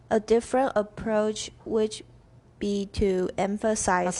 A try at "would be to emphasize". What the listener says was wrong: this time the two was correct, but your would was sloppy. One more time.